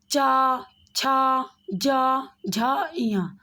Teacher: जब हम च वर्ग के ध्वनियों वर्णों का उच्चारण कर रहे हैं तो जीभ तालु में जाकर लग रही है, इसीलिए ये तालव्य ध्वनि है।